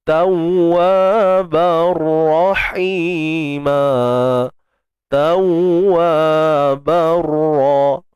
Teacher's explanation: Tanwin berjumpa dengan ra, idgham bila gunnah.